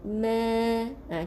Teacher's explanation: nipiskan, bukaan bibir tu, huruf mim di bibir. Jadi bukaannya kecil saja.